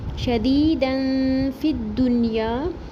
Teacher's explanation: تنوین کے بعد فا، تو یہاں پر بھی ہم اخفا کریں گے باریک · فا کی زیر کو دال تشدید سے ملا کے پڑھیں گے اور نون ساکن پر اظہار مطلق کریں گے، رکیں گے نہیں، یہاں پر اخفا نہیں ہوگا.